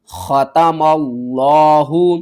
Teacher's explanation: خا کو آپ نے حلق کے سب سے اوپر والے حصے سے ادا کرنا ہے · میم کو لفظ اللہ سے ملانا ہے. لفظ اللہ سے پہلے زبر ہے، لفظ اللہ کو ہم موٹا کر کے پڑھیں گے.